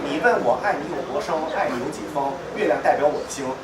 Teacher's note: 前鼻音都读成后鼻音了